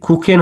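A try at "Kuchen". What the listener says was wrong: এখানে কি এর মতো উচ্চারণ হলো? এটা কিন্তু খয়ের মতো উচ্চারণ হলো এখানে, কুখেন। কুখেন।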